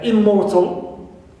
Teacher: Stress is on, not on prefix im, right, but on mortal, more, right.